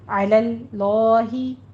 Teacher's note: लफ्ज़ जलाला का दरमियान वाला लाम जहाँ पे फतह कायमा है उसको पुर पढ़ेंगे